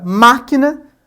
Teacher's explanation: na palavra máquina, inclusive com esse acento recai ali sobre o má, nós temos que esse ma é a sílaba tônica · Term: proparoxítonas